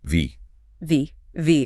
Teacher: your top teeth gently touch your bottom lip, like you're lightly biting it. Then you push air through, vibrating your vocal cords.